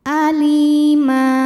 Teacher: karena ada Ya Sukun didahului baris kasrah maka huruf lam panjang dua harakat